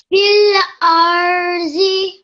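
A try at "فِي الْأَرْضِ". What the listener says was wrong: Okay, remember this dod sound? It's a dod, not a za, okay? Fil ardi.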